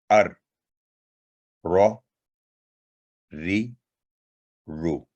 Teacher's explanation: اور یہ بھی حروف لسانیہ میں سے ہے. زبان کی نوک کا اوپر والا حصہ مسوڑوں کے قریب اوپر تالو کے سخت حصہ پر لگانے سے ادا ہوتا ہے. را، جیسے ار، رو، ری، رو.